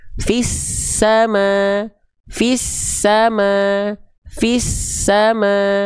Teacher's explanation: ditekan huruf sin itu akan mengakibatkan suara, nafas, suara dan desisanya mengalir. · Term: tasydid